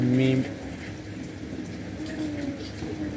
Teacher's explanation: حرف میم، اس کی ادائیگی میں کوئی مشکل نہیں ہے۔ دونوں ہونٹوں کے جو خشکی کی جو جگہ ہے اس میں سے یہ ادا ہوتا ہے